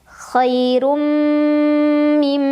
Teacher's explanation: Cara membacanya, tanwin dhammah dileburkan atau dimasukkan ke mim sambil berdengung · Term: idgham bi gunnah